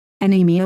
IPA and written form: əˈniːmiə (Anemia)